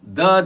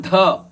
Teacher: ಮೊದಲನೆದು ರಸ್ವ ಎರಡನೆದು ಮಹಾಪ್ರಾಣದ ಧ